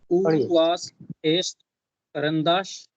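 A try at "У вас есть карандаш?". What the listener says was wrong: उवास, ये करंदाश, वाश नहीं होता है। देयर इज नो श, देयर इज एस, वास, उवास, ये करंदाश।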